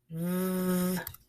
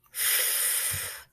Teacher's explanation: Some sounds come in pairs. They are made of the same parts of your mouth, but are different because your voice turns off or on.